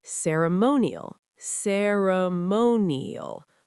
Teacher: Four syllables with stress on the third.